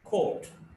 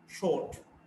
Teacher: Back, between half open and half close, rounded, short vowel.